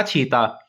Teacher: छत्तीसगढ़ी में स के स्थान पर छ कर देने की विशेष प्रवृत्ति होती है